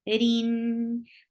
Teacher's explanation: ra is light here because whenever ra is with kasra, it is light. And it will get tawassut because you are pronouncing this noon sakin hidden here in tanween.